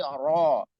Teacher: Ro sifatnya takrir, lidahnya takrir atau ada getaran di lidah ya getaran atau suara yang berulang. Ro, dan punggung lidah kita ketarik ke dalam.